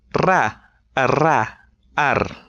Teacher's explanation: instead of vibrating your lips, you have to vibrate your tongue against your ridge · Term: alveolar trill